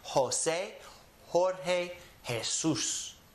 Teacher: We also have Jesus, starts with an J, but it has that H sound. So all of these start with a J, but they have an H sound.